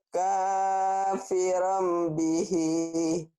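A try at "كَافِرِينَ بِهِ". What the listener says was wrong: kafirim, bukan kafiram.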